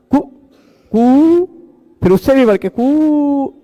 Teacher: पहले बार ह्रस्व रहता है, उसका फिर दीर्घ रहता है, फिर प्लुत रहता है,